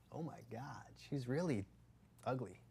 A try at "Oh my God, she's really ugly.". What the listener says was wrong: Faster. Faster. Too slow. But faster. Get right into it.